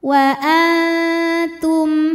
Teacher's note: Di sini hurufnya adalah huruf H. Maka mim sukun kita bunyikan dengan jelas, masih bunyi M dan tidak ditahan. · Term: izhar syafawi, idhar syafawi